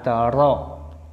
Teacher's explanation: Punggung ujung lidah sesudah makhraj nun bertemu dengan langit-langit bagian depan. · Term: huruf ro